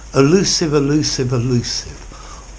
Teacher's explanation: in an unstressed way they sound the same elusive elusive elusive all with a schwa at the beginning